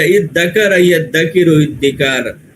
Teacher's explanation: اور اس دال میں کیا ہوتا ہے تشدید ہوتی ہے، یعنی دونوں دال کو ملا کے تشدید سے مدغم کر دیتے ہیں